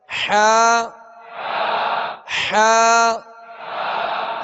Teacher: حا کو درمیانی حلق سے ادا کریں گے